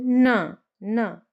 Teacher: जब हम न प्रोनाउंस करते हैं तो हमारी जीभ दांतों में भी टच होती है